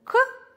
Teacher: звук к согласный глухой твердый